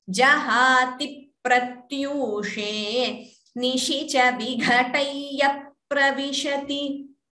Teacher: And jahati pratyushe, dvitvam. So the pa is doubling there.